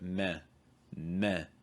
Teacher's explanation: a lot of chinese dialects you get something more like meh meh where the back of the tongue goes high